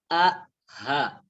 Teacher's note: Kalau di paling bawah, ya paling bawah pangkal tenggorokan itu adalah hamzah dan ha